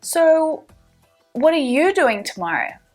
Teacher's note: push the stress transfer the stress onto you